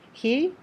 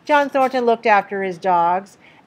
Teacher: omit the H link it after his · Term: no h